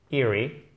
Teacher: Il y a deux E, mais attention, c'est un i court.